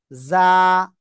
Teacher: জিহ্বার আগা সামনে নিচে দুই দাঁতের পেটও আগার সাথে লাগাবেন, লাগিয়ে এরকম হালকা আওয়াজ হবে, হয়ে তারপরে এই অক্ষরটা উচ্চারণ করতে হবে একবার, যা।